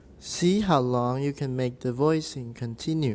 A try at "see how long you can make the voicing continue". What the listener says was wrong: So I think one thing you're doing, in addition to being a little too high, is you're falling. You've got these falling pitches. So you'll say like, see how long you can make the voicing continue.